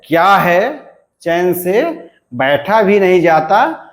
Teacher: इसमें क्या का उच्चारण ख्या है, इस प्रकार से यानी महाप्राण के रूप में सुनाई देता है।